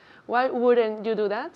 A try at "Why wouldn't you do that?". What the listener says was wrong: Do is much more hard. The sound is hard. D.